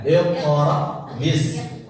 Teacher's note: jadi hamzah itu kalau sukun dia menutup pita suara. Nah itu jadi ditahan.